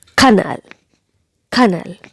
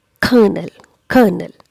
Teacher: the r is silent here and the stress is given on the first syllable